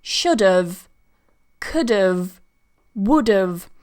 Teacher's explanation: writing should have could have would have with the verb have when you use the weak form of have it sounds very similar to of